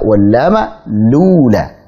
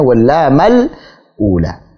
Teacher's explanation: Memindahkan harakat hamzah yang dhammah ini ke huruf sebelumnya yang bertanda sukun yaitu lam, kemudian hamzahnya dibuang. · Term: Naql